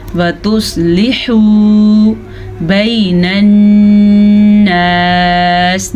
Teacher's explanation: نون کا غنہ یاد سے ادا کر لیجیے گا کیونکہ نون پہ شد ہے.